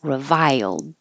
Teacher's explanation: It's not exactly three syllables, reviled, but when you go high for the I, reviled, then you slide down and it'll make an accidental Y and hold that final D